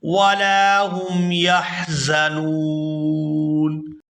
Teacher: یہاں لام کو الف مدہ کی وجہ سے کھینچ کر ادا کیا جائے گا